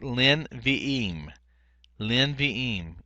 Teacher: normally you'd have two schwas here, one for the inseparable preposition here, le, and then the vocal schwa under nevi'im. Well, what happens is the first one lengthens, and the second one becomes non-vocal here.